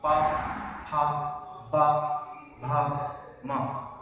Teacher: जब हम इनका उच्चारण करते हैं तो क्या होता है, हमारे होठ आपस में मिलते हैं, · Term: ओष्ठ वर्ण